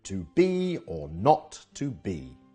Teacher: This 2-syllable foot is like a reverse trochee, so the first syllable is unstressed and the second is stressed